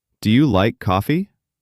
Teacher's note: Voice goes up on coffee.